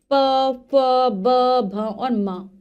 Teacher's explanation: प फ ब भ और म, ओष्ठीय व्यंजन है, जब हम इनका उच्चारण करते हैं हमारे दोनों होठ आपस में मिल जाते हैं।